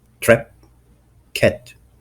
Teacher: Most important feature, raised vowels in words like trap and cat